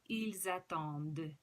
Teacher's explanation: You have the liaison, the il and elle are plural, so they have an S on the end. And when there's a vowel following it, starting the next word, you connect it with the Z sound.